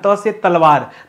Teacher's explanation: जो जीभ हमारी है वो जाके दांत को टच कर रही है। इस वजह से इसे दंत वर्ण कहा जाता है।